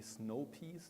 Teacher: That's not going to be a diphthong, but just one long monophthong.